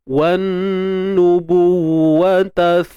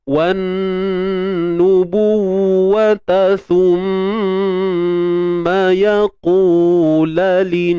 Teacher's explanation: Wajib kita dengung. Jadi dengung tu secara sempurna. Naikkan terus sampai ke pangkal hidung. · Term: wajibul gunnah